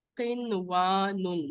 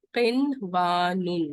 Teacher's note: سو دنیا کو نون اظہار کے ساتھ پڑھا جیسے اردو میں پڑھتے ہیں اسی طرح سے دنیا. قنوان، نون کو اظہار کے ساتھ پڑھیں گے، ادغام نہیں کریں گے